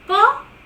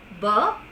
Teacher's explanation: only per is a voiceless sound and the right hand sound bur is a voice sound